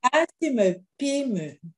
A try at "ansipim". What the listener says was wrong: Ne mets plus le me. dis seulement ansipim.